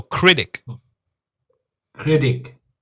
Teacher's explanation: sometimes when we have a T in the middle, we don't say critic. Sometimes it sounds like a D sound.